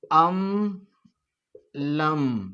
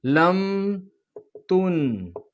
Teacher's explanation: اس کو کہتے ہیں اظہار شفوی، کہ میم ساکین کے بعد با اور میم کے علاوہ کوئی لفظ آئے تو میم ساکین کو ظاہر کر کے بغیر گناہ کے پڑھیں گے